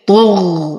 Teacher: وأعطي المد الطبيعي بعدها حقه حركتين، فبعدها حرف متحرك وهو الطاء وهو أقوى الحروف، فأعطيه درجة التفخيم